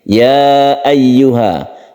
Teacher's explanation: Jaiz artinya boleh. Kita boleh membaca satu atau dua alif di huruf ya ini. Ya ayyuha. Ayyuha ada tasydid ya yang harus kita tekan sehingga suara ya-nya tersebut harus jelas. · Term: mad jaiz munfasil